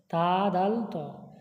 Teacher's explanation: জীবের আগা সামনের উপর দুই দাঁতের গোড়ার সাথে লাগিয়ে উচ্চারিত হয় তা দাল ত